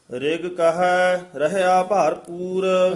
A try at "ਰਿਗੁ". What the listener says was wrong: ਰੇਗ ਪੋਲਾ ਹੀ ਬੋਲਣਾ, ਰਿਗ ਨਹੀਂ ਕਹਿਣਾ। ਰੇਗ ਕਹੈ ਰਹਿਆ ਭਰਪੂਰ।